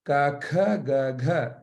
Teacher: the ka or the kantya group, ka, kha, ga, gha, that group is emerging from the back of the throat